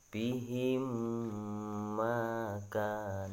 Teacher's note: memasukkan huruf mim mati yang pertama ke dalam huruf mim yang ada di depannya atau yang jatuh setelahnya disertai dengan berdengung